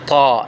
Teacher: نوک زبان اور ثنایا علیہ کی جڑیں، یہ طا کا مخرج ہے۔ جب زبان کی نوک ثنایا علیہ کی جڑوں سے لگے، یعنی زبان کی نوک اوپر والے دو دانتوں کی جڑ سے لگے